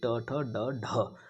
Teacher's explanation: मूर्धन्य मूर्धा के द्वारा बोले जाने वाले मूर्धन्य वर्ण ठीक है मुर्धा इन का उच्चारण स्थान होता है